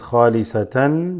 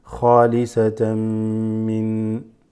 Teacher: This is idgham is assimilating, where it assimilates, mixes, joins with the next word, especially the next letter, which is mim. So it becomes khalisatan, becomes khalisatam, almost like you're getting ready to go into the mim sound.